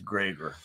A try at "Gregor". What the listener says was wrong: No, it's Gregor. You got a heavy emphasis.